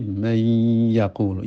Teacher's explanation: Nun mati ketemu wa wau di samping berdengung ada tekanan sebagai bukti menunjukkan bahwa itu adalah idgham Idgham ada tas tasdid